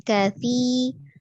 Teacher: ujung lidahnya ada di ujung gigi seri atas ya, bukan kasi, tapi kasi.